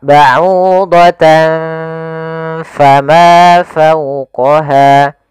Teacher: Maka ba'udatan seakan-akan ada ng tapi bukan. Karena dia ikhfa.